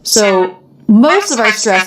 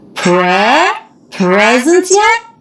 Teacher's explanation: And then it's going up. So most of our stress is on the word presents.